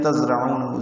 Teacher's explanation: زا ساکن ہے، اس کو تیز سفید کی آواز سے ادا کریں گے